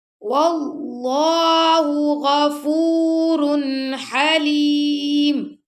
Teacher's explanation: اللہ کی لام کو موٹا پڑا کیونکہ اللہ کی لام سے پہلے زبر آ گیا